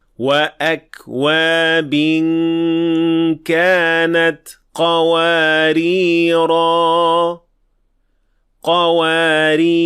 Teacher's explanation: if we stopped at these 2 words, we will pronounce the alif in the first, but not in the second.